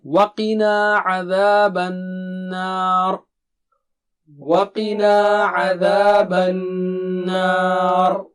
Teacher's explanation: نون پر تشدید ہے تو اس کا مطلب غنہ 2 حرکت